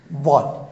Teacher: Unapiga chini ya meno kwa ndani juu. Kwenye ufizi.